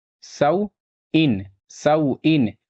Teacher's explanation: واو ساکن سے پہلے زبر ہے، واولین ہوگا، اور یہاں تنوین ہے، نون ساکن کی آواز آئے گی۔